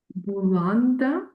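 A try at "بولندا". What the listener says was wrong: We write Bulanda, we read Polanda, which is Poland. It's a P. Polanda.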